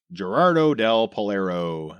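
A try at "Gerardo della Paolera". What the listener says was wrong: Yeah, so it'd be Dea. Gerardo Dea Polera. the double L is a Y sound.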